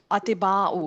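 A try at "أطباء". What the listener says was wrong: आ, और ती बा ज़बर यानी शद के साथ अतिब, अतिब्बाउ पढ़े जरा। जी अतिब्बा हजरात, तो ये उर्दू में भी लफ्ज़ इस्तेमाल होता है लेकिन गलत इस्तेमाल किया जाता है, अतिब्बाउ।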